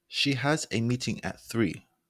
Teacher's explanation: there's a small drop off to show that it's the end of the thought